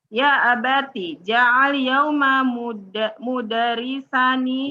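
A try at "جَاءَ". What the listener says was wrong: Ja'a pakai hamzah. Jangan naik ke atas ja'a. Kalau ja'a pakai ain jadi lapar artinya Bu.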